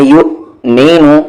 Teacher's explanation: واو silent ہے حمزہ مل رہا ہے